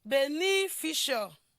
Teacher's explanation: it is actually the second syllable of this word that will be stressed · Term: primary stress